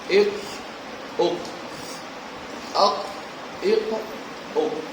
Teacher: اور 5واں مخرج ہے لحات، یعنی کوے کے متصل زبان کی جڑ جبکہ اوپر کے تالو سے ٹکر کھائے. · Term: قاف